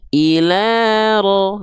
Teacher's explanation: dia mesti dibaca dengan kadar panjang 2 harokat si vokal A-nya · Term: fathah tegak